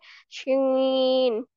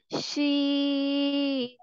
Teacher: जुबान का जो दरमियान है उसको तालु की तरफ बुलंद करते हुए बारीक और फैलती हुई आवाज में पढ़ेंगे।